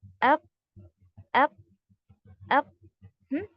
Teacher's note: यानी कि पूरा सख्ती के साथ बंद हो चुका है, वॉइस बिल्कुल भी आगे फ्लो नहीं हो रही है। ट्राई करिए अप अप, है ना, पूरा एकदम सख्ती के साथ जो है बंद हुआ है। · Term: शिद्दा की सिफत